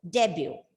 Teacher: Debut. T is silent and the stress is on the first syllable